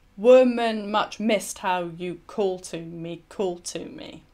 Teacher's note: you can see that the emphasis is on the first part of each metrical foot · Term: dactylic tetrameter